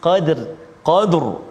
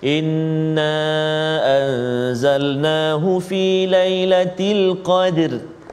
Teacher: Jadi kita kena tebalkan ataupun tafkhim ra tu. Qadr kan, jangan baca tipis. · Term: ra tebal